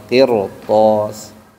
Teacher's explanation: kalau depannya huruf th maka r-nya tebal